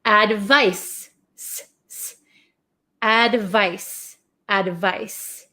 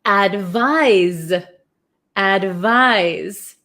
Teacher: then here we have advise advise so it's so tricky right advice has an S sound but it's spelled with a c advise has a z sound